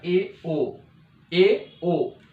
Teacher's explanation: अर्ध समृत में क्या होगा कि इसमें मुंह आधा बंद रहता है